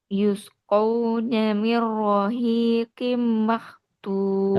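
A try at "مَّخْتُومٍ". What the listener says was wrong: Tebalkan kho. Kapan kho sukun dibaca tebal? Kho sukun dibaca tebal ketika diawali fathah atau dhammah. Makhtum. Makh saja. Sedikit lagi. Makh. Sedikit lagi. Makhtum.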